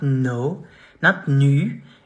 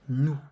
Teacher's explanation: The final S is silent.